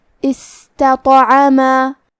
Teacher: قلقلہ کا معنی ہے حرف ساکن کو ہلانا، تو ہم حرف تو کو ہلاتے ہوئے یہ کلمہ کو پڑھیں گے استطعما. عین کی ادائیگی حلق کے درمیان والے حصے سے ہے، آخری میں الف پہ مد کا علامہ ہے، یہ بھی مد جائز منفصل ہے، تو ہم اپنی آواز 2 سے 4 مد کے برابر لمبی کریں گے۔